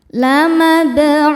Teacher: Sebab ada huruf qalqalah yang sukunnya sukun asli dan ada di tengah bacaan. Cara bacanya dipantulkan dengan pantulan yang kecil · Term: qalqalah sugro